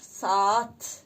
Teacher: A-nın biri düşür, digəri uzun tələffüz olunur. Burada 2 nöqtə, qoşa nöqtə, 2 nöqtə yox, qoşa nöqtə həmin hərfin uzun tələffüz olduğunu göstərir. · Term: səs düşümü